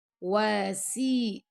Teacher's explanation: سین کو سی باریک پڑھنا، موٹا نہیں پڑھنا